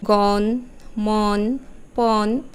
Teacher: অক্ষর বিশিষ্ট শব্দ শুরুতে অ আছে কিন্তু পরে আছে মূর্ধন্য ন সেই শব্দগুলোতে অ এর উচ্চারণ হবে বিবৃত